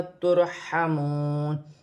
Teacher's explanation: رو ساکن سے پہلے پیش ہے تو رو موٹی پڑھی جائے گی، اور یہاں پر واو مدہ بھی ہے، واو ساکن سے پہلے پیش ہے تو واو مدہ بنے گی، واو کی صورت میں زبر گر جائے گی اور نون ساکن ہو جائے گی۔